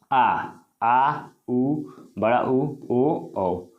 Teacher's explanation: जिन स्वरों के उच्चारण में जीभ के पिछला भाग प्रयोग होता है उसे क्या बोलते हैं, पश्च स्वर, यानी जीभ का जो पीछे वाला भाग प्रयोग होगा, जिसका उच्चारण में जीभ का पीछे वाला भाग प्रयोग होगा उसे क्या बोलेंगे, पश्च स्वर बोलेंगे।